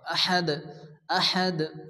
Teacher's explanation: সাকিন করে পড়তে হয়, এখানে দাল সাকিন হবে এবং কলকলা হবে।